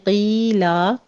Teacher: قیلا قوف کو پر پڑھتے ہوئے یا مدہ ادا کریں گے، آخر پہ وقفے ابدال کر لیں گے، 2 کاؤنٹ کرنا ہے۔